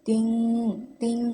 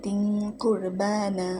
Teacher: তানবিনের পরে এখানে ইকফার হরফ আছে, কফ আছে, তাই এখানে গুন্না করে পড়তে হবে, অনেকটা বাংলা অনুস্বরের মতো। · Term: ইকফা গুন্না